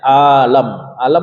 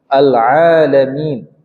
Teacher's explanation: Ain huruf Tengah tenggorokan bukan huruf hidung